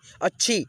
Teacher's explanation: च को छ के साथ में तेजी से उच्चारण करते हुए चलेंगे जल्दी से